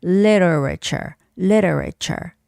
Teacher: Making the soft T sound more like an L.